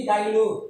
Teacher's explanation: বাংলায় কখনো কখনো আমরা উচ্চারণ করতে গিয়ে হ ধ্বনিটি লোপ পেয়ে যায়, হ ধ্বনিটি হারিয়ে যায়। তবে হ্যাঁ, সত্য হলো হ ধ্বনিটা বাদ দেওয়া যাবে। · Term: হকার লোপ